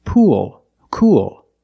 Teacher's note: you have the long o sound followed by the dark l